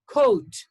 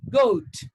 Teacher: Then you have got k and g. K is voiceless and g is voiced.